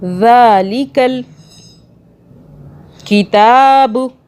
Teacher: ذال کو سافٹ پڑھنا ہے، کھڑا زبر ہے، 1 الف کے برابر کھینچا ہم نے ذال کو، اس کے بعد ہم نے تا کو کھینچا 1 الف کے برابر۔